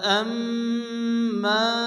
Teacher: মিমের উপরে তাসরিদ মিম ওয়াজিব মা আলিফ মাদ্দা এক আলিফ টেনে পড়তে হবে